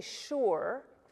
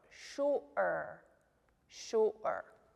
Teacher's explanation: so it's marked with the apostrophe so we don't say sure got to make that little stop in your throat